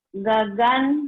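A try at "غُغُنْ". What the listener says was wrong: Gogon. Gagan. Gogon, huruf O ya. Gogon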